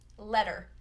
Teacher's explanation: in American English, those double T's between the vowels are pronounced as a flap T